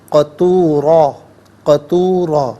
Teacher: وَكَانَ الْإِنسَانُ قَطُورًا، را پر 2 زبر کی تنوین پر کر کے پڑھیں گے، اور وقف میں 2 زبر کی تنوین الف سے چینج ہوگی تو اس صورت میں بھی پر کر کے پڑھا جائے گا